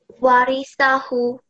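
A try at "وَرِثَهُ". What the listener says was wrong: Just make this hu a little bit longer.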